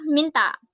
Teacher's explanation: dengan ciri-ciri hidup nasal apikodental